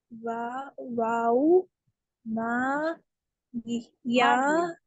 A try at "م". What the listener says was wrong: माँ नहीं है, सुनिए सुनिए, माँ नहीं है, वो मीम पढ़ना है आपको। میم کے بعد الف بھی ہے لیٹر فارم میں. دیکھیے وہاں پر ایک نشان ہے بیچ میں، ہر حرف کو توڑ کر پڑھنا ہے آپ کو.